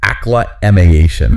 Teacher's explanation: you've got to shift that stress. It's on the third syllable. So it's ӓklə-ʻmā-shən.